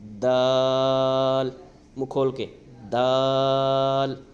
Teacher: اس کو نارمل پڑھنا ہے، بالکل نارمل، یعنی ہم اس کو موٹا نہیں کر سکتے، پتلا نہیں سکتے